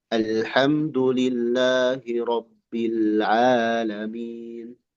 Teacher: Ainnya Bapak jangan masuk ke hidung.